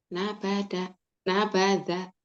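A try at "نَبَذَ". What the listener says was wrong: Agak cedal ujungnya. Nabadha, nabadha.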